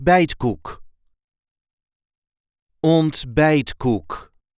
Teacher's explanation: there is a light emphasis on the second syllable